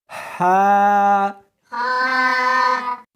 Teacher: اس کو حلق میں سے نکالنا ہے اور ساتھ میں ہوا بھی ہونی چاہیے، ہا، ہاں نہیں پڑھنی بلکہ اس کو حلق میں سے نکالنا ہے، سینے میں سے نہیں نکالنا، ہا، شاباش۔